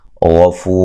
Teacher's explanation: ادا کریں گے، اس سے پہلے حرف پر زبر ہے، غفو غین کو موٹا ادا کریں گے، فو مدہ ہے